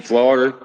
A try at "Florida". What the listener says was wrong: Sound like you said that with 2 R's. Florida. Florida. Florida.